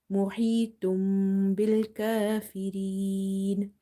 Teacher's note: So after tanween or noon sakin, if there is a letter ba, you replace the sound of noon sakin or tanween with mim. So instead of saying mohitun, you will say mohitum by doing gunna, nasalization.